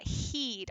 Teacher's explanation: our tongue is going to be high toward the front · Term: high front